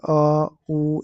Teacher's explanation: पश्च स्वर मतलब back vowels होता है, इसको बोलते हैं बैक वोवेल्स, मतलब जीभ की पिछला भाग जो होता है ना, उससे उच्चारण होता है। तो जैसे अ, उ, इस प्रकार से पीछे को होता है।